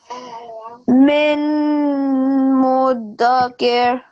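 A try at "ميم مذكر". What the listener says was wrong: So we don't say min. bring this meme to this meme. So we say mim mudakir.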